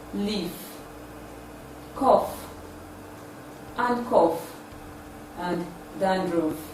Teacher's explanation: This sound is produced with minimal vibration in the vocal cord. It is produced with the upper teeth and the lower lip. It is a voiceless, labiodental, fricative sound.